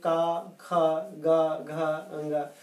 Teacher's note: कंठ वर्ण, जो हमारा ये गला है, जब आप इन वर्णों का उच्चारण करेंगे, का, ख, ग, घ, अंग, तो आप देखेंगे कि कंठ का उच्चारण करेंगे तो जो प्राणवायु बाहर निकल रही है, यानी जो हवा फेफड़ों से आ रही है, वो गले में, कंठ में अवरोध पैदा है, रुकती है। अगर आप थोड़ा सा अभ्यास करेंगे तो आपको भी महसूस हो जाएगा कि कंठ में वायु का अवरोध यानी रुकावट हो रही है।